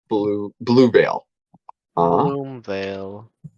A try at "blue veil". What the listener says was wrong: Not bloom, blue.